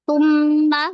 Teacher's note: Bedakan lagi tu, tumma bukan su, tu ujung lidah keluarin sedikit.